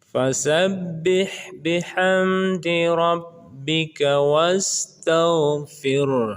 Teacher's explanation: Harus terdengar suara ha di belakang. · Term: ha besar